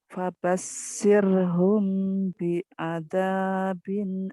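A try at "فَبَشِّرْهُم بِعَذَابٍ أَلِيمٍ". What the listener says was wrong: itu yang saya katakan shinnya kurang keluar. Fabashirhum bi'adabin alim.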